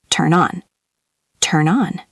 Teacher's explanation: It sounds like one word. The N at the end of turn connects directly to the O and on.